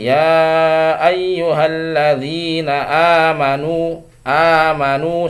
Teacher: mad tabi'i ini atau mad badal sama ya, itu satu ayunan saja atau dua harokat saja ya. Jadi ya ayyuhalladzina amanu, amanu segitu, tidak boleh terlalu panjang mad tabi'i.